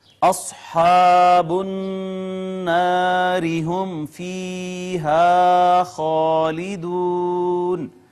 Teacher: صاد حروف مستعلیہ میں سے ہے، موٹی پڑی جائے گی ، پھر الف مدہ ہے، پھر نون کے اوپر شد تھی، · پھر نون کے اوپر شد تھی، یہ یہاں پہ غنہ ہوگا، را کے نیچے زیر ہے، اس کو باریک کر کے پڑھیں گے